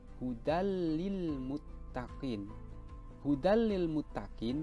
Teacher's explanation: cara membacanya itu memasukkan tanwin ke dalam lam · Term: Idgham bilagunnah